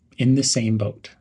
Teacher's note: stress the word same in the same boat · Link the words in and the. Stress the word same.